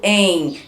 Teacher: Quando eu falo em, tem um M no final, ou então N, o som sai meio pelo nariz. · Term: ditongo nasal